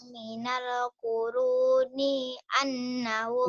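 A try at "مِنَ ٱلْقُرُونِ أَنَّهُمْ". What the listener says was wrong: Ninya pendek. Minal kuruni annahum. Ilaihimnya ketinggalan. Dari minal kuruni. Minal kuruni. Minal. Minal. Minal. Minal. Minal kuruni.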